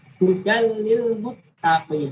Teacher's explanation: Tanwinnya di huruf dal hudan itu melebur ke huruf lamnya. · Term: idgham